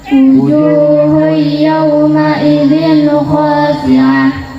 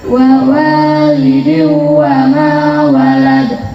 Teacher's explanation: nun sukun atau tanwin hilang dan masuk huruf berikutnya dengan dengung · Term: idgham biguna